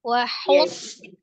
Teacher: Huruf naiknya itu di sodnya, jangan langsung dari h-nya gitu ya. Naik pangkal lidahnya itu di sodnya.